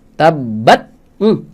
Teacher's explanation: gantian syidah duluan baru hamsnya